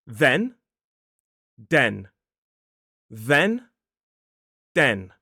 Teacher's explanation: for that voiced th sound in the word then you need to be touching your top teeth with the tip of your tongue. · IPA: /ðen/